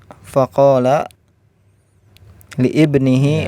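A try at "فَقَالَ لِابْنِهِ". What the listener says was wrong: Ya, faqala libnihi, itu kan hamzahnya hamzah wasal, kalau di tengah tidak dibaca libnihi-nya.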